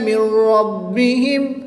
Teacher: ادغام بلا غنہ ہوگا، بغیر غنہ کے ادغام کریں گے